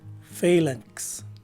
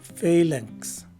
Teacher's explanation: The second letter A is a short A, and the letter N bears a longer right leg, which indicates the nasalization of the preceding letter A. Lastly, a letter K is sometimes enunciated after the letter N, but is dropped by most speakers, and a letter S takes the place of the letter X at the end of the word.